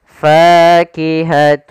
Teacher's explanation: membacanya maka kita namakan di sini hukum idamunah cara membacanya yaitu suara tanwinnya kita masukkan langsung ke huruf wau dan kemudian kita tahan gunahnya